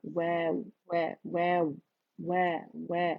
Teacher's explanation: वाव बारीक है, लिप्स की गोलाई से अदा होगा, वाव वाव वाव वाव वाव, ठीक है, इतना बारीक.